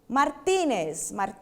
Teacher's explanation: Porque ela não terminou em N, porque ela não terminou em S e porque ela não terminou em vogal. Martínez tem acento no ti